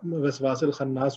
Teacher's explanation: سین کو لام سے ڈائریکٹ ملا دیں گے، وسواس الخناس ہو جائے گا یہ.